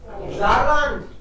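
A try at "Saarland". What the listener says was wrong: ज़े क्यों पढ़ रहे हैं, क्योंकि एस के बाद में वोवल है।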